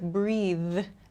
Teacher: This th sound at the end, I have to use my vocal cords to make this sound.